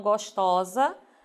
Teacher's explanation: perceba que a vogal tônica se acentua significa dizer que ela é aberta · gostoso e cioso faz a vogal tônica fechada o formal feminino perceba que essa vogal tônica se abre